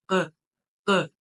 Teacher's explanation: Q'nı bildirir, amma normalda Azərbaycan dilində olan bir Q kimi bildirilmir də. Yəni bu Q'mız biraz daha boğazın tən ortasından gələn bir Q'dır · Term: qaf